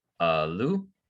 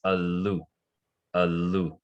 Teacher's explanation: And here you see we have a long A and a short L. And then also the oo at the end is a high tone oo.